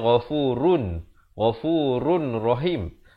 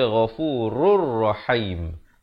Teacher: Di sini tanwin bertemu ra, idgham bila gunnah, masuk tanpa dengung. Asalnya ghafurun, ghafurun rahim.